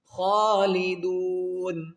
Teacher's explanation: ہم فیہا خالدون، ہم فیہا خالدون، دال وا پیش دو کو ہم کیا کریں گے کہ ایک الف کی مقدار کھینچیں گے، آگے دیکھیں گے نون ساکن ہوگا کیونکہ یہاں پر سٹاپ کریں گے، تو جب نون ساکن کریں گے یہاں پر سٹاپ کریں گے تو پھر اس کو ہم 3 الف کی مقدار کھینچ کر